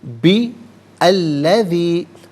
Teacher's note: اسے الذی کی لام کے ساتھ ملائیں گے، درمیان میں سے الف یعنی حمزہ کو حذف کیا جائے گا